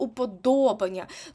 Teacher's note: слово уподобання тут наголос падає на третій склад